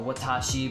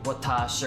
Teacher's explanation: it's the shi that's shortened, so it's just the sh sound